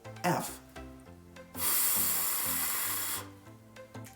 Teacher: unvoiced sounds have no vibration for example F my vocal cords don't vibrate at all